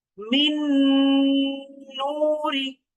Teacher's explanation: এখন খেয়াল করেন এই যে নুন সাকিন, নুন সাকিনের পর আরো একটা নুন, আরো একটা নুন মানে এটা ঈদগামের হরফ। সুতরাং এই নুনের উপর কিন্তু তাসদিদ হয়ে যাবে এবং এটাকে আমাকে এখন তাহলে গুণনা করে পড়তে হবে। মিন নুরি। আচ্ছা, আমরা কিন্তু মাঝখানের এই নুন সাকিনকে বাদ দিয়েছি।